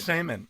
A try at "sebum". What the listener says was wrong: It's not semen. S-E-B, like sebum. It's like sebum. Yeah, but sebum.